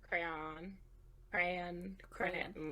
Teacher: The like, second syllable, like, almost completely disappears. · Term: southern thing